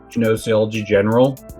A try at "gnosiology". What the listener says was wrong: Gnosiology. You don't pronounce the first G. Yeah,